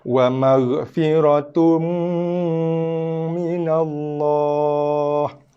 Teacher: Tapi disebabkan oleh kerana lepas baris 2 tu ada huruf mim, berlakunya bacaan idgham al-gunnah, maksudnya masukkan bacaan ke dalam huruf mim.